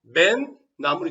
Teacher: 비음화가 일어나서 맨 나물이 되겠죠. 그러니까 매 나물이라는 원형에서 맨 나물이 되면 니은 소리가 생겨난 거죠. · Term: 니은 소리가 덧나는